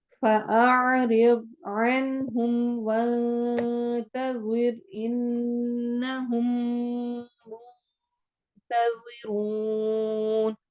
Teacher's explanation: ہے اور نرمی کے ساتھ، رو واو مدہ ہو رہی ہے، منتظرون، نون پہ اخفا کے ساتھ اور روا کو موٹا پڑھتے ہوئے آخر میں مد کریں۔